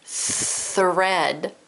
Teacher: I say the word thread, I don't feel my voice box or my vocal cords vibrate. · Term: th unvoiced